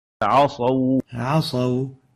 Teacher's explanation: So make sure the ain stays attenuated and it has tarqiq.